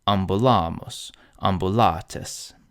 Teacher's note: Here the penult is long, the long A, so it's stressed.